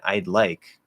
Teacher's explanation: it's actually kind of more of like a flatter dental type d without touching the teeth